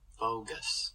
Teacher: So he'll say this whole word with voicing throughout, and then at the tail end, he'll open up his vocal folds for the voiceless S.